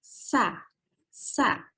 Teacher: ujung lidah di antara gigi atas dan gigi bawah. Tapi lebih dekat ke gigi yang bawah. Sa, sa. Karena dia ringan, kita untuk ingat-ingatnya berarti kita tersenyum.